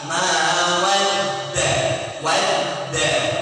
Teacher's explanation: Kita mentasydidkan atau menekan huruf dal